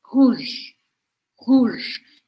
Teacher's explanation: a letra e do final da palavra não é pronunciada por isso eu vou terminar o som no j